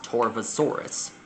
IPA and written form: ˌtɔːrvoʊˈsɔːrəs (Torvosaurus)